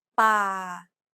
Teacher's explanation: Remember, Thai contrasts between a hard B, an unaspirated P, and an aspirated P. This example uses an unaspirated P sound like the P in spin.